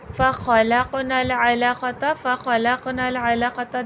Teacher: علقۃ میں عین حرف حلقی سے ادا ہوگا، حلق کے درمیانی حصے سے